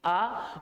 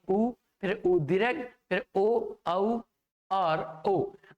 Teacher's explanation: जैसे कि हम आ का उच्चारण करें तो हल्की सी पीछे खिसकेगी आ, उसके बाद में उ, फिर उ दीर्घ, फिर ओ, औ और ओ। आप जैसे जैसे इनका उच्चारण करते हैं जिह्वा पीछे खिसकती है और जिह्वा का स्वरूप जो है अर्धचंद्राकार हो जाता है, जिसके कारण जो है ये जिह्वा जो है जो हमारे होंठ की आकृति है वो भी धीरे धीरे गोल होने लगती है साथियों। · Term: पश्च स्वर